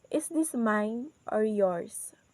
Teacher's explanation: So in the word mine, our voice is goes up, and then in the word yours, our voice is goes down.